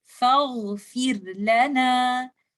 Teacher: Fir, ra is a letter of bainiya. So I have to make sure the timing of the ghain is more than timing of ra.